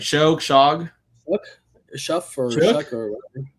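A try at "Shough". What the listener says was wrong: There's no there's no C or K in there.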